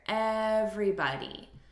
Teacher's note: So we're stressing the first syllable.